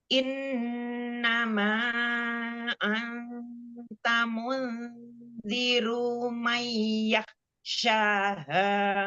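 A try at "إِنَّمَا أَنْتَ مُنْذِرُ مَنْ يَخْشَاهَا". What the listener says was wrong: Ru jangan ada mat. Mundziru man yakhshaha.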